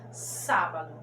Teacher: a antepenúltima é a mais forte é acentuada